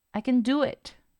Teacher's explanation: voy a reducir el sonido de Ken haciendo que suene como Ken Ken ya que la mayor fuerza de voz lo voy a dar al verbo principal